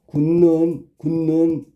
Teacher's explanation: 그다음에 디귿이 굿누는 뒤에 니은의 영향을 받아서 디귿이 니은으로 바뀌지. 그러니까 얘도 비음하지요. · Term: 비음화